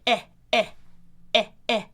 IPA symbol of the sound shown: ɛ